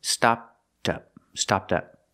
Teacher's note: link the T sound with the next word